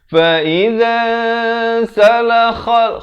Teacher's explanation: kha ni pula makhrajnya di hujung kerongkong.